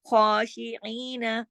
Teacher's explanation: خا کو موٹا بھی پڑھنا ہے، ایک حرکت اوپر کھڑی زبر ہے، الف کے برابر بھی پڑھنا ہے. خاشعین، عین، ای جو ہے یہ بھی کھینچے گا دو حرکات، اس کے ساتھ یا مدہ ہے لیکن نون نہیں کھینچے گا.